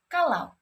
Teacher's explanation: diftong au dan diftong o diftong au contohnya pada kata kalau Au di sini A dan u berubah menjadi A dan W